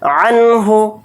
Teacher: عنہ کے اندر اظہار حلقی کا قاعدہ ہو رہا ہے، کیونکہ یہاں پر نون ساکن کے بعد ہا آ رہا ہے، ہا اظہار حلقی کے حروف میں سے ایک حرف ہے، نون کی آواز کو ظاہر کر کے بلا غنہ کے جلد پڑھیں گے۔